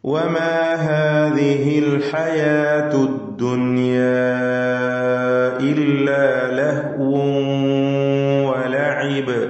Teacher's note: തർക്കീഖ് ചെയ്ത് നേർപ്പിച്ചുച്ചരിക്കേണ്ട അക്ഷരങ്ങളാണ്, തഫ്ഹീം ചെയ്ത് തടിപ്പിക്കേണ്ട സ്വരഭാരത്തോടെ ഉച്ചരിക്കേണ്ട അക്ഷരങ്ങളൊന്നും തന്നെയില്ല